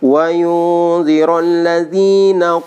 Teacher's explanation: nun mati ketemu dengan za, itu ikhfa ya, ikhfa lagi ya, ikhfa kholqi itu 3 harokat.